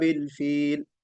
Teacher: باصحاب الفیل، با مکسورہ ہے، اس کو ہم مجہول نہیں پڑھیں گے، بے اصحاب الفیل نہیں بلکہ باصحاب الفیل، فیل، ٹھیک ہے؟ اس کو ہم تھوڑا سا کھینچ کر رکیں گے، مد عارض ہے، مد عارض للسکون ہے